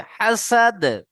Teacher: দালের উপরে সাকিন হচ্ছে, তাহলে কলকলা করে আগের অক্ষরের সাথে মিলিয়ে পড়তে হবে